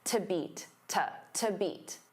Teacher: because to is a preposition, it becomes unstressed